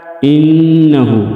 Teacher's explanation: انہ نون مشدد میں غنہ کریں گے